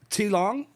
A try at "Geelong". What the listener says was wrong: No, G for goat.